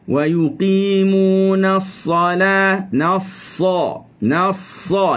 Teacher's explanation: Naik pangkal lidah sa. Salah. Turunkan pangkal lidah pada lam.